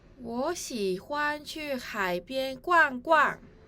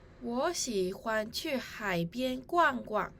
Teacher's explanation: In this sentence, the words 欢 and the second 逛 should have a neutral tone. These two words were read with the first tone and the fourth tone respectively.